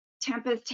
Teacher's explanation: Tempest has an aspirated T at the beginning, but not at the end of the word. The second vowel in Tempest is reduced to the schwa sound.